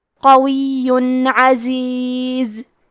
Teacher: تو ہم یہاں تنوین ظاہر کریں گے اور اسے نون ساکن پڑھیں گے اور بغیر غنہ سے یہ حکم کو ادا کریں گے